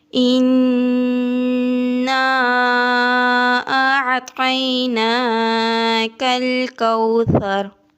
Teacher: نون پر گنہ کرنا ہے، نون کے اوپر شد ہے، نون کو سختی سے ادا کرنا ہے۔ الف کے اوپر مد ہے، چھوٹی مد ہے، اس کو 3 الف کے برابر لمبا کرنا ہے۔ اعطیناک الکوثر، طا کو جب زبان کی ٹپ کو دونوں دانتوں کے جڑ سے لگائیں گے تو طا ادا ہوگا۔